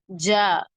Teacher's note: ச ஜீம் ஜீம் ஜ நாவின் நடுப்பாகம் நாவின் நடுப்பாகம் மேல் முரசை அழுத்தமாக தொடும்போது உண்டாகிறது. குரல் அழுத்தமாக இருக்க வேண்டும். உதாரணமாக ஜன்னல், ஜடை என்பதில் உள்ள ஜாவை போன்று உச்சரிக்க வேண்டும்.